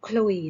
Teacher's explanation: รอลิงเราจะไม่กระดกลิ้นเหมือนเรือ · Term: อักษรควบล้อลิน